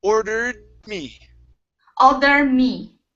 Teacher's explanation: we pronounce half of the D sound only. So we don't want to finish the D. This is how you connect it without pronouncing that extra sound.